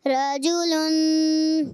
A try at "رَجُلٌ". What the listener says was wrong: رجل لمبا نہیں کرنا، رجل